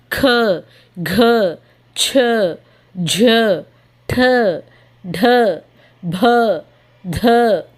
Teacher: ఈ సౌండింగ్స్ అన్నిటిలో ఎండింగ్లో మనకి హా సౌండ్తో ఎండ్ అవుతుంది. · ఎయిర్ అనేది మన నోట్లో నుంచి చాలా ప్రెషర్గా ఎక్కువగా బయటకు వస్తుంది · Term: మహాప్రాణ్